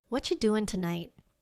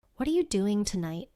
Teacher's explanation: When a native speaker says this quickly, it doesn't sound like, what are you doing tonight? It often sounds like, what you doing tonight?